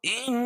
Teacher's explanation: ان نون مشدد ہے، اس میں غنہ ہوگا